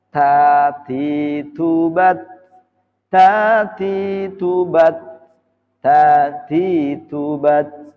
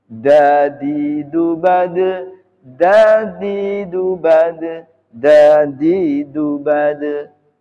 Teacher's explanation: Ta sifatnya hames, dal sifatnya jahar.